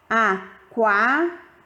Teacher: a letra U é a semivogal e a letra A é a vogal, porque sai o som mais forte. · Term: ditongo crescente